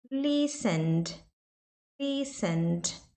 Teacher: Aqui no listen, antes do ed, né, do ed, é um N. Então você não fala esse E. Então fica listen, mais o som do D.